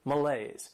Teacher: This word has 2 syllables and the stress is on that second syllable.